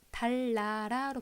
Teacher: 달나라, 리을, 니은이 리을, 리을로 바뀌는데 그 이유는 앞에 나오는 리을이 뒤로 영향을 줬어요. 이것을 우리가 순방향이라고 하고요. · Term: 순행동화